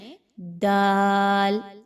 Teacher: ता की तरह जुबान के नोक को पीछे मसूड़ों के साथ मिलाएं।